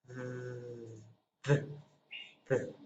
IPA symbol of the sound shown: ð